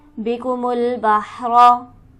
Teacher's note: बिकुमुल बहरा, जल्दी पढ़ेंगे, रा को पुर पढ़ेंगे ज़बर की वजह से